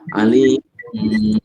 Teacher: cara membacanya mengubah huruf nun menjadi mim disertai dengan dengung sekadar dua ketukan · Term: iqlab